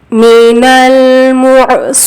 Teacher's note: میم پیش مو بولنے کے بعد حلق میں آواز کو رکیں گے. عین ساکن کی آواز آئے گی.